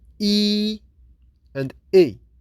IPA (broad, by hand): i: and i